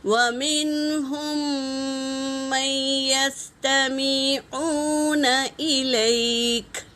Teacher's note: میم ساکن کے بعد میم آئے تو پہلے میم کو دوسرے میم میں ملا کر غنّے کے ساتھ پڑھیں گے، اسے ادغام شفوی کہتے ہیں۔ · یا پر تشدید ہے، تو ہم نون کو نہیں پڑھیں گے